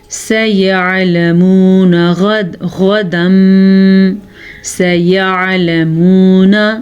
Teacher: عین کے تلفظ کا دھیان رکھنا ہے. عین آپ حمزہ میں نہ لے جائے، گناہ ہوگا لفظ چینج ہو جائے گا، یعنی کہ لکھا ہوا ہے سیعلمون، آپ اس کو سیعلمون بالکل بھی نہیں پڑھ سکتے۔